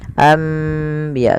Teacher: Membalikkan suara nun menjadi suara mim. Awalnya anbiya Allah, karena bertemu dengan ba maka diganti dengan mim, maka dituliskan di atasnya dengan bentuk mim ini agar dibaca anbiya sambil ditahan 2 harokat. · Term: iklab